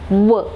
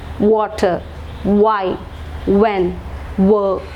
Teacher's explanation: We protrude the lips and then we spread it by saying this particular sound, w.